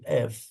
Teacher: নিচের ঠোঁট ও উপরের দাঁত